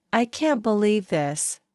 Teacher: If you say, I can't believe this, with a downward tone, it may show disappointment.